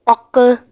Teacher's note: جنبش دی جاتی ہے، تھوڑی سی حرکت لاتے ہیں، آواز کو دبا کر تھوڑا سا اور نکالتے ہیں تو اسے قلقلہ کہتے ہیں